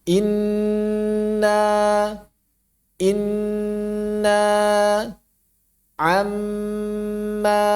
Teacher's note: Bainiyah gunnah mengalir dua harakat.